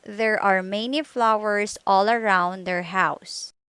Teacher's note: Your tongue's position moves from relaxed, low to high position for the ow sound. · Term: ow as in house